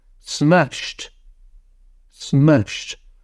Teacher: ends in sh and it sounds like a t